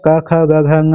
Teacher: कंठ में क, ख, ग, घ आता है।